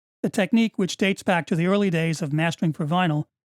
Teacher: the upwards inflection of the last two words clearly leads into a follow-up comment